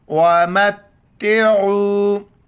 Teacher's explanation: یہاں پر ادغام مال غنہ کریں گے اور میم کو تا کے ساتھ ملائیں گے، عین کو گلے سے کر کے واو کے ساتھ ملائیں گے